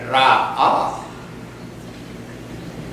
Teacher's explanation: the tip of the tongue just touched on the back of the tooth right near the gum